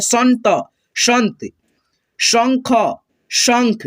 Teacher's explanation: इस बिंदु को हम लोग आधा न और आधा म पढ़ते हैं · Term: अनुस्वार